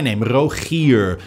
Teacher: you end the word on a soft round r